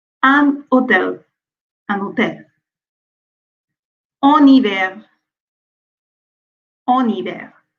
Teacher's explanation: So in French, the H is muet, which means the H is silent. That means we don't pronounce the H. And before a word starting with H, on fait la liaison.